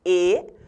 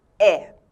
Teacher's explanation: esse acento pode ser circunflexo, quando o timbre da vogal é fechado, E, ou agudo, quando o timbre da vogal é aberto